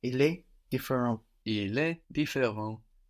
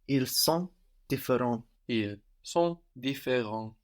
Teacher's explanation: T and S are one consonant syllable, no, and that's silent on the end there. So the singular and the plural sound the same.